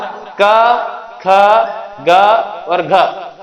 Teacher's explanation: ऐसे वर्ण जिनका उच्चारण स्थान कंठ से होता है वे है क वर्ग पूरा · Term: कंठे वर्ण